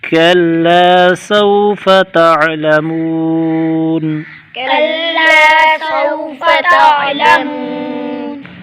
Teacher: عین کو گلے سے نکالیں گے، منہ پر واو مدہ، یہاں پر سکون عارضی تو مدے عارض ہوگی یعنی تین الف کھینچ کر پڑھیں گے۔